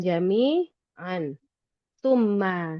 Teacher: Tanwin itu mulai mulutnya mau merapat. Tapi kita enggak ngerapetin full murni rapat. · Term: ikhfa